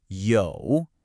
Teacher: Now, to get this right, I want you to imagine your voice is on a little roller coaster. It starts in the middle of your range, it dips down low, and then it rises back up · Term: third tone